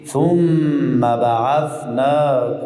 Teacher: ای دو میم را یک میم میسازیم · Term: ادغام